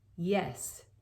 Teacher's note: Then y, as in yes. That is the glide, which is written in IPA as a J, but it's the y sound. And it acts a little bit like the E vowel, but again, not all the way there, but gliding through it.